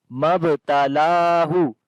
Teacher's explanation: on the ba we make qalqala, lam we long due to standing fatha.